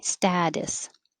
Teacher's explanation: the t changes to a d